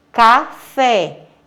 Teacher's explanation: Porque a sílaba tônica é a última, fé é a última sílaba. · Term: oxítona